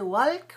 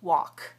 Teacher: In this pattern, A-L-K, the L is silent. Don't pronounce the L at all.